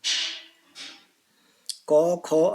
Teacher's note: अघोष जिसमें घोष गूंज नहीं होती